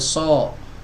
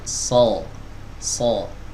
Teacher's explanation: ketika mengucapkan huruf shad itu, mereka memonyongkan dua bibir